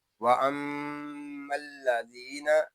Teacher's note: یہاں میم ساکن میں ادغام میں میم شدد میں غنہ ہوگا، زال کو ایک الف تک کھینچ کر پڑھیں گے کیونکہ یہاں یا مدہ ہو رہا ہے